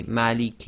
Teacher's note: we've got a long vowel with a sakin letter so this can be two four or six long